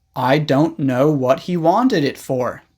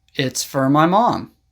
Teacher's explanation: For is often pronounced fur.